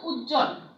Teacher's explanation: যুক্ত ব্যঞ্জনের ব ফলা অনুচ্চারিত থাকে